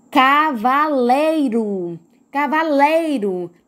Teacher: Lei é a sílaba tônica, é a mais forte.